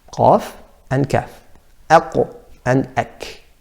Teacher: These two letters come from the furthest point in the tongue.